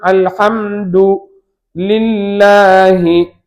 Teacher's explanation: அல்லாஹ் என்ற சொல்லுக்கு முன்னால் கசர் வந்திருப்பதால் இதற்கு தர்கீக்காக வாயை காலி செய்து சொல்ல வேண்டும்.